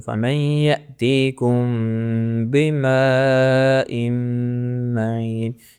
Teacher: جب میم ساکن کے بعد با آ جائے گا تو ہم میم کی ساؤنڈ کو دبا کے غنے کی ساؤنڈ نکالیں گے۔ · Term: اخفا شفوی